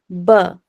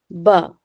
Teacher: جب دونوں ہونٹوں کا گیلا حصہ ذرا زور سے مل کر الگ ہو جاتا ہے تو حرف با ادا ہوتا ہے، ٹھیک ہے۔ اب دیکھیے اپنے لپس پر آپ غور کریے، لپس کا جو آؤٹر پارٹ ہے وہ تو ہمارا خشک ہے، ٹھیک ہے، لیکن جو تھوڑا سا انر پارٹ دیکھیے وہ ہمارا گیلا حصہ ہوتا ہے۔